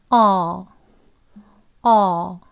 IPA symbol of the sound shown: ɔ